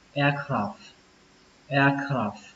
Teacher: Khi chúng ta đọc kỹ thì chúng ta sẽ có cả âm F lẫn âm T. Nhưng mà khi chúng ta đọc nhanh thì các bạn hãy quan trọng âm F thôi các bạn nhé. Nghĩa là các bạn phờ nó ra một cái thì nó sẽ chính xác.